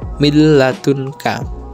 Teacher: mil ladunka tanpa ditahan dan tanpa mendengung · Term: idgam bilagunnah